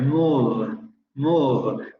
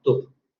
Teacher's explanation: La vocal es más larga en move porque tenemos un fonema fricativo. El fonema labiodental fricativo sonoro. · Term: alargamiento